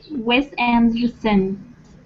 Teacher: The stress is on and, make it big, and therefore the other vowels are basically swallowed. We don't say them.